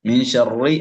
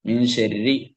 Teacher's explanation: മിൻ ഷർറി എന്നല്ല ഓതേണ്ടത്, മിൻ ശർരി എന്നാണ്, നേർപ്പിച്ചാണ് ഓതുന്നത്. ഷർറി എന്ന് ഓതരുത്, കേൾക്കാം, അത് തെറ്റാണ്.